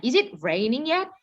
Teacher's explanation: Biasanya katanya yang kalau ujungnya naik, final rising intonation itu intonation stays high or continues to rise after the highlight word